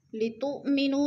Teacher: لتؤمنو، لفظ میں حمزہ ساکنہ کو ہم جھٹکا دے کے پڑھیں گے. لتؤمنو، نو میں پھر وہ مدہ ہے، وہ مدہ کو ہم نے لمبا کر کے پڑھنا ہے.